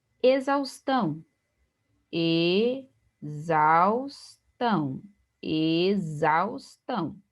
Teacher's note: aqui não é um hiato, que nós temos um ditongo